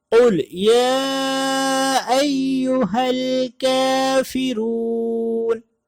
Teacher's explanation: پہلا قاف موٹا ہے اور دوسرا کافرون کا کاف باریک ہے